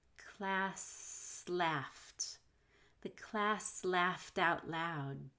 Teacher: between class and laughed you want to hold the s